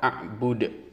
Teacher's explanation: A'bud, dal yang terdapat pada kata a'bud di akhir adalah qalqalah kubro. Karena kita berhenti membaca maka dibaca qalqalah, bunyinya ada di tenggorokan.